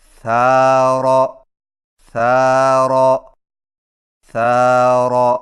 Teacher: زبان کی نوک کو سامنے والے اوپر کے دو دانتوں کے اندرونی کناروں سے نرمی سے لگا کر باریک آواز میں پڑھیں، جیسے ثار ثار ثار۔